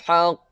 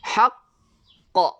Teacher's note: Hol seketika kita punya qalqalah baru kita lepaskan